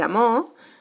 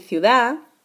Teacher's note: pérdida de D y R finales, pues en vez de amor decir amor, en vez de ciudad decir ciudad.